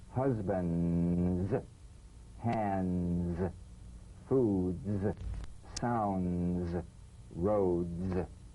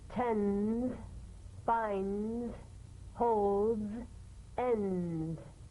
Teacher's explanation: Press the tongue against the upper gum ridge for the D drum beat and peel the tip down a bit as the Z vibrates just before the tongue springs away. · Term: resonant staccato z